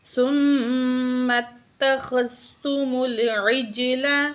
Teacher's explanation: جیم جو ہے ساکن ہے، یہاں پہ ہم قلقلہ کریں گے